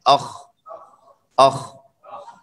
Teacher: دونوں میں آواز جاری اور حرف نرم، اور استعلاء میں دونوں برابر موٹے پڑے جاتے ہیں دونوں، اور استفاء انفتاح میں یہ تفخیم تھوڑی کم ہو جاتی ہے، باقی یہ مستعلیہ ہے، پر پڑے جاتے ہیں۔ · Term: رخوہ